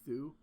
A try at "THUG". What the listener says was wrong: No, you pronounce the G. But you pronounce the G. Thug.